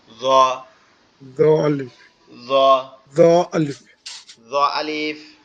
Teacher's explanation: জিহ্বার আগা উপরের দুই দাঁতের আগার সঙ্গে লাগবে। আমাদের যে সামনে দুইটা দাঁত আছে এই দুইটা দাঁতের আগার সঙ্গে লাগবে, লেগে উচ্চারিত হবে জ।